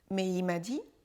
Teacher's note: Le « L » de « il » disparaît.